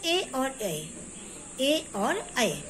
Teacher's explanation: ये कंठ और तालु से बोले जाते हैं, इसमें कंठ और तालु दोनों चीजों का उपयोग ही होता है। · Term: कंठ तालव